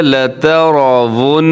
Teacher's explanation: لتر را موٹا پڑھا جائے گا، اور کیونکہ اس کے اوپر حرکت ہے. ون یہاں غنہ آپ نے کرنا ہے کیونکہ نون مشدد ہے. پھر سنیے گا لترون، تا کو موٹا نہیں کرنا، تا کو اپنے باریک ہی رکھنا ہے.